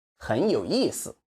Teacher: We need to stress 意 because 思 is neutral.